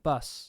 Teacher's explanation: words with an /ʌ/, like bus, are pronounced instead with a schwa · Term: strut-comma merger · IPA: bəs